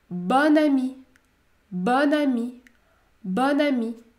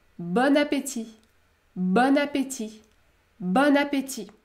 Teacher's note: Si cet adjectif se termine par une voyelle nasale on, en effectuant la liaison, vous allez prononcer le O ouvert.